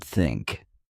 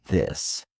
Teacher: One common difficulty is the tu-a-e sound, as in words like think and this. This sound requires you to place your tongue between your teeth and blow out air while voicing the word.